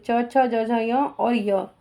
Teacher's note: तालु और जीभ के स्पर्श से बोले जाने वाले वर्ण तालवा वर्ण कहलाते हैं। ई च वर्ग, च छ ज झ य और य।